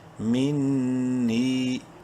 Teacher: نون مشدد ہے، غنہ کریں گے